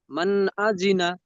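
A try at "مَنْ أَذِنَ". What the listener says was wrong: মান গুন্না এসে গেল আপনার এখানে। বিনা গুন্নায় জাহির নুন সাকিনের আওয়াজকে বিনা গুন্নায় জাহির করে তাড়াতাড়ি পড়তে হবে। মান আজিনা, মান আজিনা।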